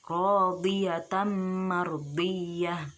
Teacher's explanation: Nah, kemudian ada huruf dot di lafadz radiyatan mardiyah. Huruf dot makharijul hurufnya yaitu hafatul lisan, tepi lidah